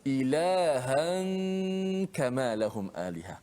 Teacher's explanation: Kita tak baca ilahan, tak. Hujung lidah kita sembunyikan makhrajnya. Kan? Di samping kita gunnahkan nun tu dan kena panjangkanlah gunnah tu. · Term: hukum ikhfa